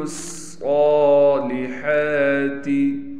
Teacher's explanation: إِلَّا الَّذِينَ آمَنُوا وَعَمِلُوا الصَّالِحَاتِ، لام کو ہم ڈائریکٹ اس صاد سے ملائیں گے، صاد پر تشدید ہونے کی وجہ سے تھوڑا ٹھہراؤ بھی کیا جائے گا، صاد پر کڑا زبر ہونے کی وجہ سے صاد کو کھینچیں گے بھی